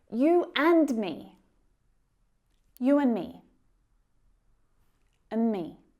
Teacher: And often the d at the end, the d sound, we also drop that. So it sounds a lot like un. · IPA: /ən/